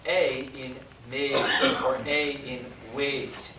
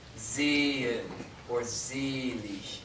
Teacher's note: It looks like a lowercase e. That is A in made or A in wait. It is a closed E.